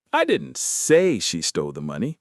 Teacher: Stressing say means I implied it, but I didn't use those exact words.